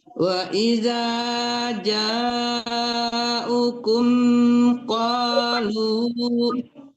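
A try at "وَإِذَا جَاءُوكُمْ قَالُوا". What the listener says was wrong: Pindah, U-nya kan panjang. Perhatikan yang panjang-panjang jangan dilangkah.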